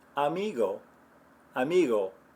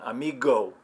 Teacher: little bit of a closure in the back of your throat it's almost like you're about to make the G sound without all the friction that we have in English